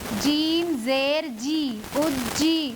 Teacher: جیم کا مخرج ہے، زبان کا بیچ اوپر کے تالو سے مل کر ادا ہوتا ہے۔